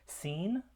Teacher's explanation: For example, the sounds that are produced that are spelled with the letter S or the C, which is the soft C, or sometimes both, as in this word, seen. Seen is produced with a constriction at the alveolar ridge, so we have an alveolar fricative there.